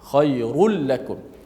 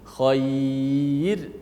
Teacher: Ini waqaf, tasaddaqu khair, dibaca dengan nipis. Adapun kalau kita sambung, kembali kepada asal, ra baris di depan dibaca tebal, khairul lakum.